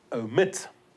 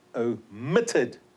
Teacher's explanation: Stress is on the final syllable.